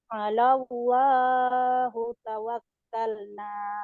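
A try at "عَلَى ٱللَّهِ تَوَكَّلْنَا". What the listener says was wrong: alallahi bukan hu. Alallahi tawakkalna.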